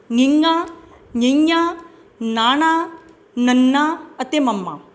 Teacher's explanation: ਆਵਾਜ਼ ਦਾ ਕੁਝ ਭਾਗ ਨੱਕ ਵਿੱਚੋਂ ਨਿਕਲਦਾ ਹੈ।